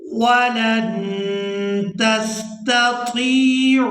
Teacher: यहाँ नून साकिन पर इख्फा करेंगे